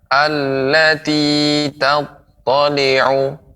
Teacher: allati jangan terlalu panjang, cukup ditekan saja